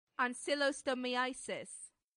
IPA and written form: ˌænsɪˌlɒstəˈmaɪəsɪs (ancylostomiasis)